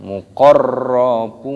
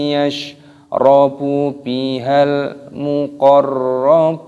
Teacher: terdapat tasdid pada huruf ro-nya, ini dimasukkan muqarrabun, bunyinya panjang, ada waw sukun mad tabi'i 2 ketukan, dan huruf nunnya di sini dimatikan karena mad arid disukun.